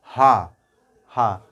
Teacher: हा में हमारा जीभ कहीं स्पर्श नहीं हो रहा है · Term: कंठ